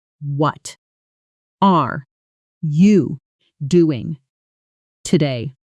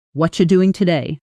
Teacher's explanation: notice how what are almost becomes wada and are you blends into something closer to are ya